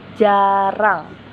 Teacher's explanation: dihasilkan dengan mengartikulasikan lidah pada lengkung kaki gigi kemudian dilepaskan secepatnya dan diartikulasikan lagi seperti R pada kata jarang.